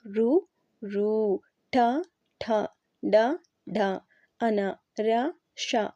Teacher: నాలుకతో గట్టిగా అంగిలి తాకుతూ పలికే అక్షరాలు ఋ ఋ ఠ ఠ డ డ అన ర ష వీటన్నిటిని కూడా మూర్ధన్యాలు అంటారండి.